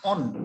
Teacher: নটা অর্ধভাবে উচ্চারিত হচ্ছে, নটা কিন্তু পুরোপুরি ভাবে উচ্চারিত হচ্ছে না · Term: রুদ্ধ দল